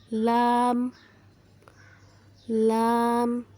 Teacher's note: جب زبان کا کنارہ اوپر والے مسوڑوں سے ٹکر کھائے تو لام ادا ہوتا ہے